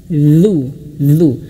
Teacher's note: Ujung lidah kita menyentuh ujung gigi seri atas. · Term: zal